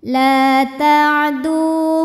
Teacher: lam ini panjang dua harakat la ta'du du Mad Thobi'i dahohiri sebab ada wau sukun yang sebelumnya berbaris damah maka dibaca panjang dalnya dua harakat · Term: mad tabi'i zahiri